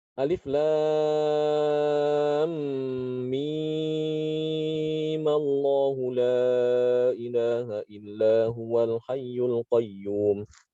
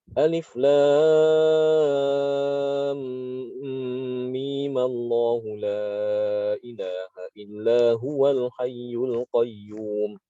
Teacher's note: Itu mimnya boleh dibaca 6 harokat atau boleh juga dibaca 2 harokat. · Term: mad lazim